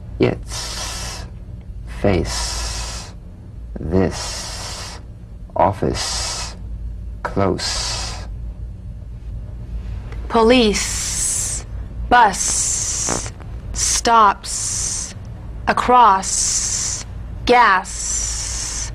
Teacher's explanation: the s is like the z except it's unvoiced so it's the same tongue placement as the z the z the s is like a gentle escape of steam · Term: unvoiced s sound